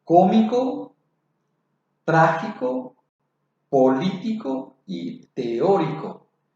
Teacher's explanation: Luego tenemos la otra clasificación, las palabras esdrújulas. Estas llevan la fuerza de la pronunciación sobre la antepenúltima sílaba.